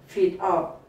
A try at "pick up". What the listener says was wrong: 뭐 이렇게 들리지만 P로 시작하니까 pick, pick up, pick up, pick up, up,